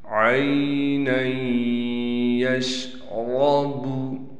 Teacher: نون کو یا سے ملائیں گے غنہ کے ساتھ، را کو پر کر کے پڑھیں گے